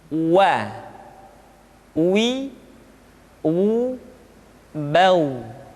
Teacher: huruf wa diucapkan dengan cara memonyongkan dua bibir kita.